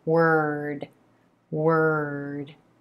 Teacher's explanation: as we move from the W to the ER were then the tip of the tongue just taps up for that D consonant sound right behind the top front teeth